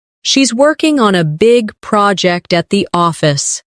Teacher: Stress, working, big, project, and office.